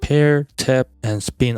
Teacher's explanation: Pair, tap, and spin all share the same phoneme P. However, the phoneme is realized as discrete phones depending on the environment it appears, namely aspirated P as in pair, unreleased P as in tap, and plain P as in spin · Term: allophone